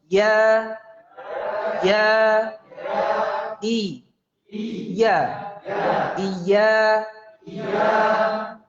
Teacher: Iya, gitu kan. Jadi harus betul-betul dari tengah lidah sebagai makhraj ya-nya. · Dikeluarkannya dari tengah lidah. Karena ini bukan ya mad.